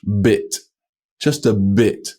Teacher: there's a vibration going on all the way through the sound